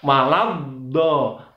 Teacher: Wala di situ ada tasdid di huruf dot. Maka cara membacanya harus ditekan dan langsung masuk hurufnya. Jadi bacaan yang benar waladdo.